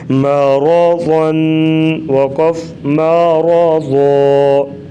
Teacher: را کے اوپر زبر ہے، را کو پر پڑھیں گے اور ضاد کو موٹے حروف میں سے اسی لیے اس کو موٹا کریں گے